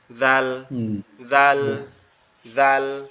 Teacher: জালটা উচ্চারণ হবে আমাদের জিহ্বার আগা, সামনের দুই দাঁতের আগার সঙ্গে লাগবে।